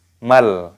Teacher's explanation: Lalu roknya di sini dipanjangkan 2 ketukan, dan di sini meskipun mimnya ada tanda alifnya mad tabi'i, namun di sini ada alif lam qamariyah, lamnya sukun, maka tidak dipanjangkan lagi, dibaca mal. Nah, seperti itu, mal hutomah.